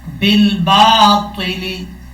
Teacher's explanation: با کو لام سے ملائیں گے، بیچ میں یہ جو آپ کو الف نظر آ رہا ہے اس کو چھوڑ دیں گے. با لام زیر بل، حمزہ با زبر با، بل با، تو زیر تی، لام زیر لی، بالباطل.